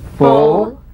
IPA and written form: fʊl (full)